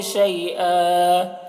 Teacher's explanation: یا لین ہے، اس کو جلد پڑھیں گے، نرم آواز کے ساتھ جلد پڑھیں گے